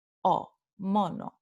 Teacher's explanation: Entonces, esta es la vocal acentuada o y es una vocal media, ¿verdad? Porque la lengua no tiene que subir y no tiene que bajar. La lengua se queda en una posición media,